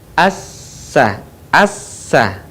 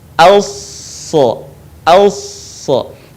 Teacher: Dan sifat serta karakternya pun tidak jauh berbeda dengan huruf sin. Yang membedakan antara sin dan shad adalah suaranya yang menebal saat kita melafalkan huruf shad.